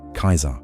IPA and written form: ˈkɛizər (keizer)